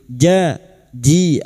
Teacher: huruf jim makhrajnya ada pada tengah lidah, wastul lisan